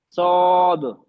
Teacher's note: सौद जब पढ़ेंगे आप जबान को पीछे से उठाएंगी, नरम तालू तरफ